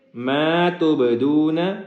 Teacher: با کے اوپر حروف قلقلہ ہے اور ساکن ہے، جس کی وجہ سے قلقلہ کریں گے